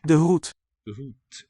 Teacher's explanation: And D is devoiced to a T sound. And OE spells the OO vowel sound, single vowel, double letter.